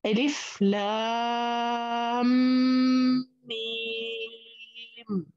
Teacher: دخل الحرف الأول في الثاني مشددا، فصار شدة، بما أنه صار شدة معناته صارت لا لام في قبل المد هنا صار مثقل لأنه ما بعده مشدد، فتلفظ ألف لام ميم، ست حركات، ست حركات وغنة حركتين، لا تنسوا الغنة الحرف المشدد.